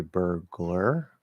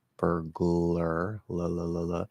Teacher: I'm not bringing my tongue up. I'm not doing a light L or a full L consonant. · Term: half L